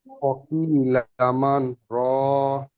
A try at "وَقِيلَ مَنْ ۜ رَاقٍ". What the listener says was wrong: আরেকটু থামতে হবে।